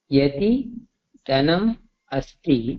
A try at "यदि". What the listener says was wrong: அங்க எதின்னு சொல்றீங்களோ? எதின்னு வரும், தா இல்ல.